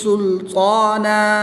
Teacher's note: 2 زبر کی تنوین کو وقف میں الف مدہ سے تبدیل کر کے پڑھیں گے